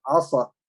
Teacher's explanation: حرف الصاد وهو من حروف الإطباق، تعطيه هذه الصفة اللي هي إطباق، اللي هي أن اللسان هذا الحلق يطلع فوق، أنت يعني انتقصت منه.